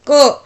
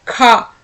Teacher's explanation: क में कम और ख में ज्यादा यानी कि अधिक वायु देखने को मिलती है। तो महाप्राण में आ जाता है।